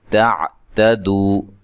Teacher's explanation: تا کو باریک پڑھنا ہے، دو و مدہ ہے